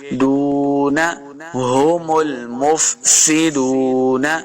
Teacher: دال پیش واو دو، واو مدہ ہے 2 حرکات لمبا کر کے پڑھیں گے